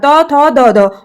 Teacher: और दंत में आता है हमारा त वर्ण के उच्चारण त थ द ध